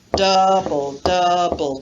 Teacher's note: an example of the trochaic pattern stress unstress stress unstress stress unstress stress unstress